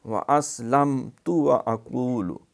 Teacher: نہیں، کلیہا، واسلمت، یہاں سین کی سیٹی صحیح سنائی دے، واسلمت، لام میم پہ کلکلا نہیں کرنا، اظہار کرنا ہے